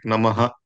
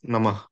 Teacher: a sentence which ends in a visarga we tend to pronounce the whole thing like namaha instead of namah